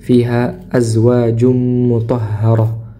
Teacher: tanwin bertemu dengan huruf mim maka diidgamkan tanwinnya dileburkan masuk ke mim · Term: diidghamkan